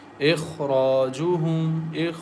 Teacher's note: Kha is thick and heavy letter because it is pronounced as kha, and it comes from the upper throat.